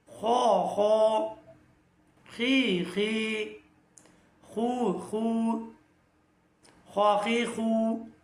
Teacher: খ এর মাখরাজ আমি যদি আপনাদেরকে জানাই গলার শেষ ভাগ থেকে